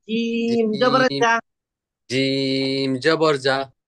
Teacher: জিহ্বার মধ্যখান উপরের তালুর সঙ্গে লাইগা যাবে